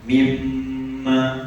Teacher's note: Wajib dengung kita baca panjang dua harakat. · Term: wajibul gunnah